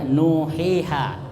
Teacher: jadi nu panjang satu alif, hi panjang satu alif, ha panjang satu alif